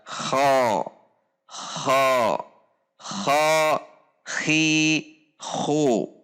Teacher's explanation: Kenapa berbunyi seperti kha itu sebetulnya bukan di o kan, atau di bahasa Indonesia kan menjadi o, jadi kho, tetapi menaiknya pangkal lidah. sehingga bunyi A terdengar seperti O. Perhatikan perubahannya dari pangkal lidah rileks, kemudian pangkal lidah tegang atau isti'la atau naik. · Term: al-isti'la